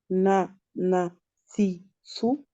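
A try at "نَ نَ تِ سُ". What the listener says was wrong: Voilà, c'est ça.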